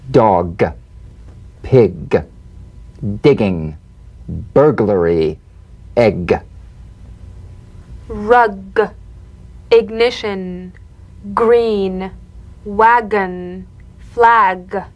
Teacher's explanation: a voiced pulsation of the back of the tongue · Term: drum beat G